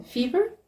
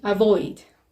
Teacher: We have and as in fever and as in avoid. And these sounds are articulated with contact of the lower lip with the upper teeth. Both of these are fricative sounds. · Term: labiodental